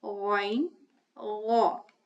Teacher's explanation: the sound of ghayn is gha, which is a heavy sound, so it is pronounced with a fuller mouth.